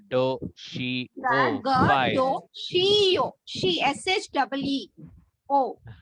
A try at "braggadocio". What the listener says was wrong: अरे यहाँ पे SH कहाँ दिख रहा है, यहाँ पे CIO दिख रहा है तो where will you put more emphasis, where the more high pitch sound will come?